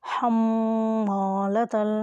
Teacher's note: میم ساکن ہے اس لیے یہ گنہ ہوگا